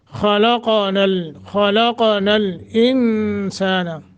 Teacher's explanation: इन यहाँ इख्फा करना है, नून साकिन के बाद सीन है।